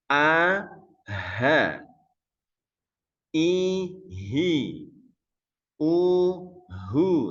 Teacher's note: huruf ha diucapkan dengan cara menyempitkan pita suara saat Sukun dan membukanya saat berharakat sambil menghembuskan udara